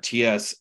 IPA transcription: ts